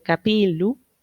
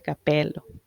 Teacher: la I eh, breve, que es abierta, se va a confundir con la E cerrada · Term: abertura de I a E